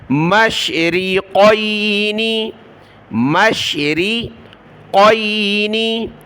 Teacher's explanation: آگے قاف بڑی قاف ہے، اس کو موٹا پڑھنا ہے